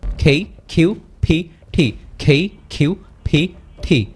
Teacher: এটা হচ্ছে অ্যাসপিরেটিভ সাউন্ড। এখানে হচ্ছে মুখের ভিতর থেকে একটা বাতাস বের হবে।